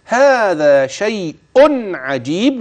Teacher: وهتظهر نون التنوين والجيم مرت ولا تنسى قلقلة الباء